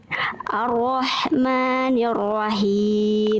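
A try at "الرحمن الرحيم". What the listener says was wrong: Oke, dari perpindahan antara ro dengan ha jangan sampai gini. Ar-Rahmanir-Rahim. Ar-Rahmanir-Rahim. Jangan sampai roh ya. Ar-Rahmanir-Rahim.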